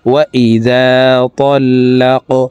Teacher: কফ কলকলার হরফ উপরের দিকে ধাবিত করে ধাক্কা দিয়ে উচ্চারণ করব